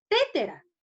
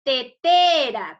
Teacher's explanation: Entonces, la mayor fuerza de voz está en la segunda T.